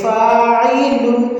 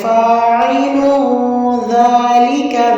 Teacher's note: آگے دال آ رہا ہے جو کہ اخفا کے حروف میں سے، تو یہاں پہ ہم نے لام کی تنوین پہ اخفا کرنا ہے